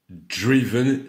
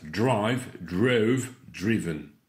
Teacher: Drive, drove, drove, diphtongue, drove, driven. Cette fois, ce n'est plus une diphtongue pour le i, mais un i court.